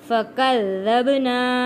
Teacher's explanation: با حروف کلکلہ ہے، یہاں پہ کلکلہ ادا ہوگا۔